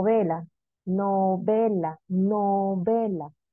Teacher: La mayor fuerza de voz dónde recae en la segunda sílaba